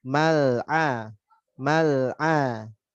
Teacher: Lamnya jangan lupa ngalir, jangan mal atau berhenti. Mal'a, mal'a, jangan berhenti.